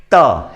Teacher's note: दांतों को स्पर्श किया है इन व्यंजनों। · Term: दंत्य वर्ण